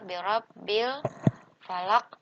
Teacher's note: ketemu dengan huruf Fa nah ini disebut dengan alif lam qamariah jadi Alif lamnya sukunnya dibaca jelas ya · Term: alif lam qamariyah